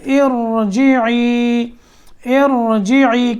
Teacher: را سے پہلے زیر ہو تو را باریک ہوتی ہے، لیکن یہاں اس کو موٹا کریں گے. ارجعی، ارجعی، کیونکہ اس سے پہلے جو زیر آ رہی ہے اس کو کسرہ بولتے ہیں. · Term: را موٹا